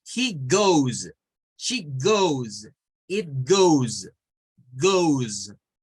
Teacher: Lo que suena es la S como una S vibrante en este caso.